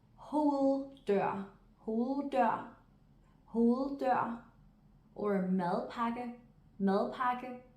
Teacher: Rule number 5. In clusters or compound words, the D comes to reassert itself, but is still softly pronounced.